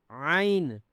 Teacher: ऐन जो है आपके गले से निकले। गले के जो ऊपर वाला हिस्सा है वहां से आपके ऐन की आवाज निकले · عین جو ہے آپ کے گلے سے نکلے، گلے کے جو اوپر والا حصہ ہے وہاں سے آپ کے عین کی آواز نکلے کلیئرلی